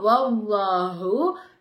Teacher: அடுத்ததான் வல்லாஹு. அல்லாஹுங்கிற வார்த்தைக்கு முன்னாடி உள்ள எழுத்துல ஜபர் வந்துச்சுன்னா அப்ப அந்த அல்லாஹுங்கிற வார்த்தைய வாய் நிறைய காத்து வச்சு நம்ம உச்சரிக்கணும்